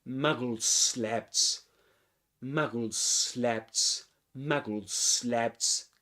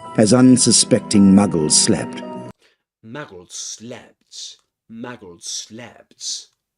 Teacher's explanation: you pronounce only one s sound but longer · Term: regressive assimilation of voice